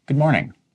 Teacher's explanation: Notice how good is a very, very short and quick good.